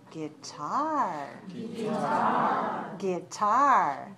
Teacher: guitar guitar two syllables stress the second